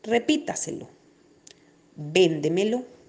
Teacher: Eso quiere decir que la mayor intensidad recae sobre la cuarta sílaba, o sea, antes de la antepenúltima sílaba tónica. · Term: sobreesdrújulas